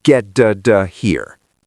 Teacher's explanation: Good. Fast, urgent. The t in get and out connects. Get da da here.